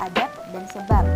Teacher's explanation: fonem B pada silaba akhir kata adab dan sebab diucapkan P, adab dan sebab yang persis sama dengan pengucapan fonem P pada atap dan usap.